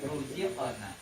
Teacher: ro yang berharokat domah, ya. Maka juga dibaca tebal